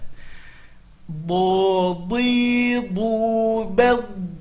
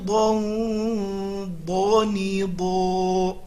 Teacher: Huruf do makhrajnya adalah tepi lidah ke gigi geraham atas.